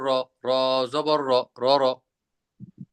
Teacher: এমনে র বললে আপনার জিহ্বার জিহ্বাটা একটু কাঁপবে কিন্তু কাঁপাটা জরুরি না কাঁপা ইচ্ছা করে কাঁপানো যাবে না এমনিই